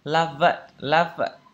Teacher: Thì cái âm khi mà âm F này nó mà nối âm với âm này ấy, thì cái âm F này nó sẽ chuyển thành âm V. Thì chúng ta sẽ phát âm là love it, love it.